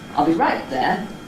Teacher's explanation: jump up, hit a high note on the right, and then get to your nucleus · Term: single syllable head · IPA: I’ll be ˈright ͵there